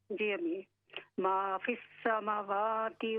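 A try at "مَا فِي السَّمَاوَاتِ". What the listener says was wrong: देखें, मीम पर खड़ी जबर है, इसको पूरा पढ़ें। मा फिस समावाति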